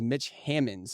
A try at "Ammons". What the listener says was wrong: I've heard that 100 times, but it's just Hammonds without the H. Ammons, yeah. Hammonds without the H.